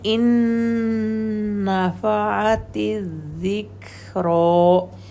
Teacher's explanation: دونوں نون ایک دوسرے کے اندر مکس ہو جائیں گے اور اوپر نون پر تشدید آ جائے گی، 2 حرکت کا ہولڈ